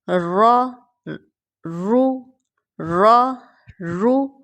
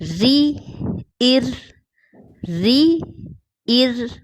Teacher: را کو زبر اور پیش کے ساتھ موٹا پڑھا جاتا ہے، جیسے را رو را رو اور زیر کے ساتھ باریک، جیسے ری ار ری ار۔